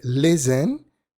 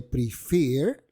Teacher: listen tiene el estrés, la fuerza, en la primera sílaba, mientras que prefer la tiene en la segunda. Los verbos de dos sílabas que tienen el acento o la fuerza en la segunda sílaba duplican la última consonante.